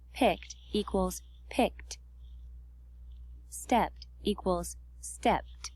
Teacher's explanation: After a voiceless sound, no vibration, it's pronounced t